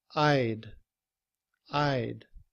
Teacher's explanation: In reduced form, we drop the sound of the H, and combined with I, we would just say I'd.